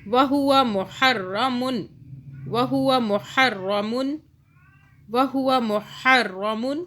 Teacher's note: ہا کو حلق سے، را کو موٹا